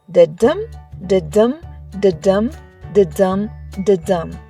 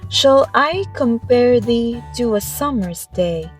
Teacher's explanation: it follows a special rhythm called iambic pentameter. Each line has a 10 syllables and the beat goes like this: da-dum, da-dum, da-dum, da-dum, da-dum.